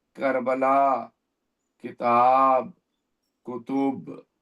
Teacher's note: جب کاف کہیں گے تو زبان کا آخری حصے سے تھوڑا سا پہلے ادا کرنے کی کوشش کریں گے